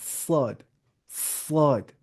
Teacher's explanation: जुबान की नोक और सनाया सुफला का किनारा